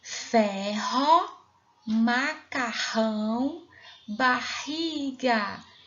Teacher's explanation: está no meio de duas vogais Observe os dois exemplos e o r com som forte o som sai pela garganta